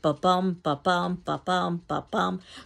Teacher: stressed and unstressed it sounds like a heartbeat